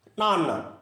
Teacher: నాన్న అనే పదములోని నా దీర్ఘాక్షరం రెండు మాత్రల కంటే ఎక్కువ పలకబడుతుంది అనే అక్షరము దీర్ఘాక్షరము కావున పుట్టుకుతోనే గురువైనది. నా అంటే ఒక అక్షరం కంటే